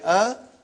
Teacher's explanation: alif has no speech sound when you say ah it is the sound of Hamza